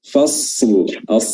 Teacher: huruf shad ini ya sebenarnya memiliki sifat rakhawah. Ya, dia tuh mengalir. Suara itu bisa tetap terdengar walaupun dia sukun.